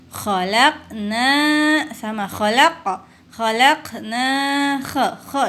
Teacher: bacanya kha bukan ho. Ini perhatikan kha. Ini termasuk huruf halak ya, ada di tenggorokan.